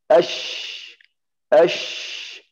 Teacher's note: Makhraj shin di tengah lidah. Sama langit-langit di atas. Ash. Kemudian ada keluar udara banyak.